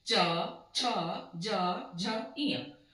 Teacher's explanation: कंठ से, क, ख, ग, घ, अंग। जब चवर्ग का उच्चारण करते हैं तो वो हमारे तालु से टच होकर निकलता है